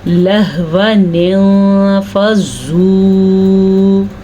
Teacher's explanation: نون کی وجہ سے یہ الف بھی نہیں پڑھا جائے گا، یعنی کہ ویسے اگر نون نہ ہوتا تو یہ الف مدہ ہوتا، لیکن نون کو پڑھنے کے لیے اس لیے نون پہلے ہی لکھا ہوا ہے الف سے پہلے کہ نون پڑھا جائے گا اور الف نہیں پڑھا جائے گا